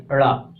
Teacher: जीव तलवे के ऊपर के आगे के हिस्से से लगेगी और झटके से नीचे आएगी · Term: उक्षिप्त व्यंजन